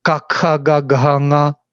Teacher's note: So you can do it with the back tongue touching the soft palate